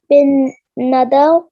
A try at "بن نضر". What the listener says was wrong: بن not nadar, there is not fatha on dot, okay, بن نضر